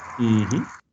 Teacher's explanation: Voiceless, oral, alveolar, plosive.